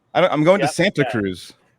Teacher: Yeah, we just skip the T.